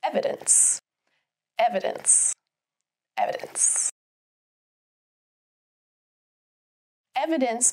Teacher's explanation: Evidence has three syllables. Evidence. With the emphasis on the first syllable.